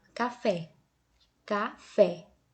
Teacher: se eu falar, café, café, notem, esse fé é mais forte, não é? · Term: oxítona